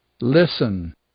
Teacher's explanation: É o caso do listen, por exemplo, onde a gente não diz o T.